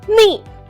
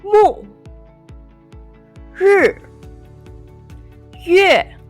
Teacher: Fourth tone is a falling tone. Start at a slightly higher than neutral pitch, then go quickly and strongly downwards.